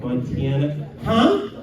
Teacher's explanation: they kind of put a Y in their vowels for some reason.